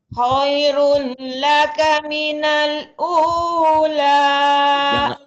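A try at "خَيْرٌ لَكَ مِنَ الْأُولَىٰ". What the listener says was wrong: Jangan khairun. Khairul kan idgham kan, masuk ke sini. Khairul laka.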